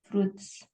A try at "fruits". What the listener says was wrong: Ya, U-nya nggak usah dibaca. Fruits.